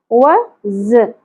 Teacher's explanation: و ز دونوں پہ ایک ایک حرکت ہے، زیادہ نہیں کھینچنا. ز کو سیٹی کے ساتھ شدت کے ساتھ پڑھنا ہے، بزنگ ساؤنڈ کے ساتھ